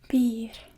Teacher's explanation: it just has the roll of the R there